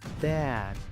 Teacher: La D no se pronuncia como una T. Casi no hace un sonido. La D se usa para parar el escape de aire.